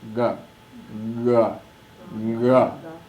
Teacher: Short, unaspirate, soft consonant.